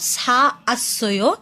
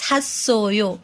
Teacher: the last vowel will combine with following vowel to make one sound